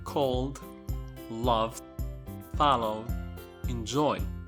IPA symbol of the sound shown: d